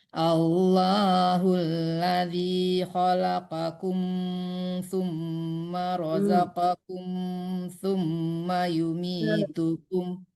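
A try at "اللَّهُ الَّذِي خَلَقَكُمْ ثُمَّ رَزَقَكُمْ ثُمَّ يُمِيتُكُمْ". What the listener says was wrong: Kum itu jangan tertahan, tidak dengung. Khalaqakum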